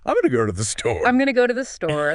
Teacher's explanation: The beat falls on go and store. Exactly. Going to reduces to gonna, partly because it's a function phrase, and it needs to be quick to allow store to get the main stress.